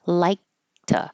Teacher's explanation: This T stays a T because the sound before it, k, is voiceless, even if you don't hear it.